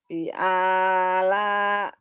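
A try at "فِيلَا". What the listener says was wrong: V-nya panjang. Ini panjang semua, Bu. Fi'ala gitu. Ibu Bapak, kalau giliran dua titiknya dibacanya pi, giliran satu dibacanya dua, kebalik-balik.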